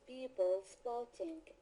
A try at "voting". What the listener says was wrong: So affects people, when you say the word voting, you have to pronounce that V more. Voting, not boating, but voting.